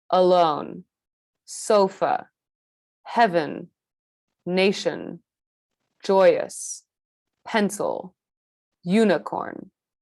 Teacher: this vowel sound is indistinct. It's creating a very, very small space to create the shortest, most reduced syllable possible so that our stressed syllables, like in the word alone, the second syllable, lone, sounds even more dramatic and even more important than its unstressed counterpart, alone.